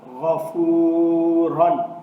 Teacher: اب اس میں غین اور را یہ دونوں پر پڑھے جائیں گے۔